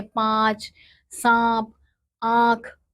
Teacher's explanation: इस ध्वनि का उच्चारण करते समय वायुमुख और नाक दोनों से एक साथ निकलती है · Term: चंद्र बिंदु